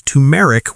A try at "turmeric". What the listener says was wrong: Don't forget the R. Turmeric.